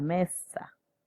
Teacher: el grupo ns volviéndose únicamente s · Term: asimilación consonántica